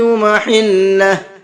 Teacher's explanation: جب ہم یہاں پر وقف کریں گے ہا پر تو ہا بھی ساکن ہو جائے گا، کیوں؟ اس لیے کہ ہا کے اوپر الٹا پیش ہے، اور الٹا پیش پر جب ہم وقف کرتے ہیں تو الٹا پیش بھی ساکن ہو جاتا ہے، تو اس لیے میں نے اس کو محلہ پڑھا ہے۔